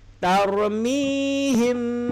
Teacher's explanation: Kalau him bibir rapat. Kalau ini bibir ada renggang sikit, namanya ifa' syafawi. Tarmihim, kita harus ada sikit angin.